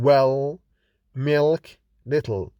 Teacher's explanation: The dark L is voiced velar lateral, that is the place changes from alveolar to velar, which is in the back of the mouth, like in well, milk, little. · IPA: /l/